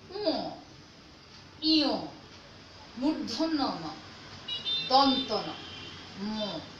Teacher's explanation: নাক দিয়ে যে বাতাসটা আমরা বের করি, এই বর্ণগুলো উচ্চারণ করার সময় সে বাতাসে আধিক্যটা থাকে, এই কারণে এই বর্ণগুলোকে বলছে নাসিক্য বর্ণ।